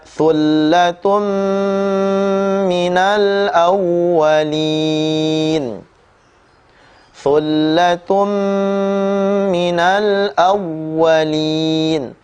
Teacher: tanwin dhammatain bertemu dengan huruf mim, juga dibaca dengan tempo gunnah yang dipanjangkan